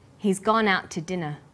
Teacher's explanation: we stress he's gone out and dinner the two is unstressed